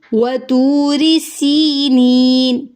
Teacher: سین میں سیٹی ہے اور سی یائے مدہ ہے، یا ساکن سے پہلے زیر ہے، اور پھر یہاں پہ نی پہ بھی یائے مدہ ہے، یا ساکن سے پہلے زیر ہے، تو دونوں طرف ہم ان کو دونوں جگہوں پہ سی اور نی کو لمبا کریں گے۔ · را کی زیر کو لمبا نہیں کریں گے اور را کو باریک پڑھیں گے